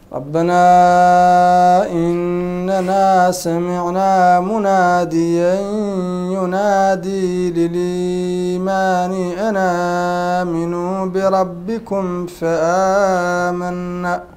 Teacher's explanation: الإمام ورش رحمه الله يشبع المد المنفصل في حالة الصلة